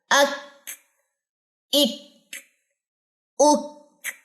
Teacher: बारीक काफ है, तो इसके अंदर हम्स डालते हैं